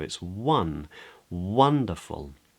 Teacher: In a word like wonderful, the stressed syllable is actually the first one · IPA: ˈwʌndəfʊl